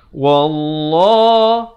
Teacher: lafz jalalah ini dibacakan tebal 2 harakat